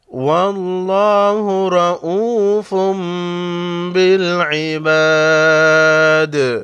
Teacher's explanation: را پر زبر ہے، را کو بھی موٹا پڑھیں گے۔